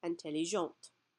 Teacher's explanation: So once again, we're not going to hear the T or the final consonant when it's masculine singular. But because we have the E on there when it's feminine singular, we can pronounce that T